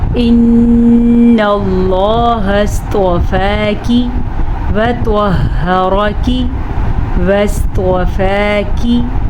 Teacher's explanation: لفظ اللہ کو پر پڑھنا ہے، لفظ اللہ سے پیچھے زبر ہے